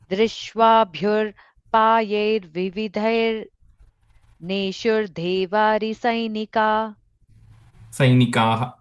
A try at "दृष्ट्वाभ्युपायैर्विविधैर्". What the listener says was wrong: The first second line, the drishtwabhyu, I'm hearing a ir sound when you're saying there's no ir there. Drishtwabhyupayair, that's where the first ir is coming.